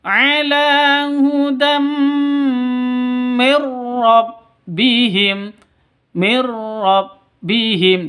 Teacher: Jadi langsung mirrah seperti itu. Mir rabbihim tanpa dengung. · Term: idgham bila gunnah